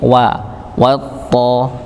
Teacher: Wa-nya tetap tipis, to-nya yang tebal. Jadi tidak sampai wa-nya itu ikut-ikutan tebal dikarenakan nyambung pada huruf to, dan ini sering terjadi.